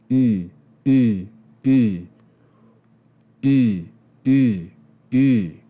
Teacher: make the sound e with your lips tightly rounded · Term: Upsilon